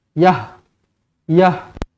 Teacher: huruf ta marbutah apabila kita waqaf, kita berhenti, dia akan bertukar menjadi huruf ha mati.